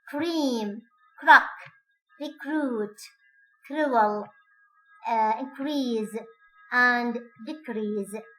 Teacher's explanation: re after K is going to be voiceless with some kind of a friction. Take up the position for K, then put the tongue tip in the position for re, and then K is released, push breath, through to cause a friction.